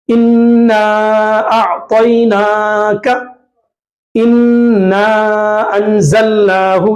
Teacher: نون مشدد ہے، نون کے اوپر تشدید آیا تو نون کو کھینچ کر پڑھیں گے. یہاں پہ بھی انا انزلناہ میں نون کے اوپر مشدد آیا تشدید کھینچ کر پڑھیں.